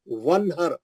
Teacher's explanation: वाउ का जबर जाके नून के जजम से मिल जा रहा। नून पे जो जजम है वो जजम वाउ के जबर को पकड़ लिया।